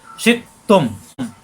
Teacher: হামজায় সাকিন শক্ত হবে, শিখ গলার ভিতরে আটকে যাবে কিন্তু বাড়ি খাবে না